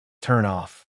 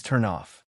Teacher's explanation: Instead of turn slash off, it becomes turn off. The N connects to the O. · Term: Consonant plus vowel